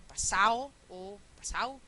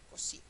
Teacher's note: Porque es débil, porque la D oclusiva se convierte en fricativa y de fricativa es tan suave que muchas veces pasa simplemente a no pronunciarse